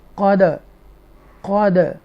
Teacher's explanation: dal sakina with the echo sound jumbish